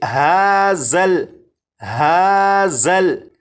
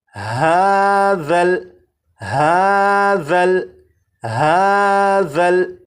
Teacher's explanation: اب اس لفظ کو پڑھیں گے، اور اس لفظ میں یہاں پر دیکھیں یہ ذال ہے، ذال کو نرمی سے پڑھیں گے، یعنی سی ٹی کی آواز کے بغیر پڑھیں گے، اور اس حرف کی سی ٹی کی آواز کو ختم کرنے کے لیے زبان کی نوک کو اوپر کے سامنے کے 2 دانتوں کے سرے سے جب لگائیں گے تو ذال کے اندر جو سی ٹی کی آواز ہوتی ہے وہ ختم ہو جائے گی۔